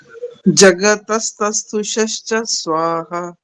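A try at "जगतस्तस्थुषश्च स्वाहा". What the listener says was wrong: शश्च, जो च लास्ट वाला बोला ना, वो वहां बल मत दो, वो डबल नहीं तस तस्थु शश्च, च आराम से बोलना। च में बल लगा दिया तो वो डबल जैसा बन जाएगा, वो मत बोलो।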